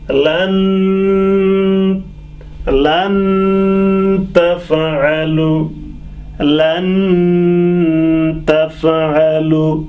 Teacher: That's why this nun has to be unclear. We got to take a pause on nun for a second or two, and through the nose. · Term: nun sakin